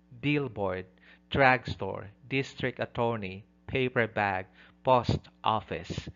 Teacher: The first noun receives the primary stress.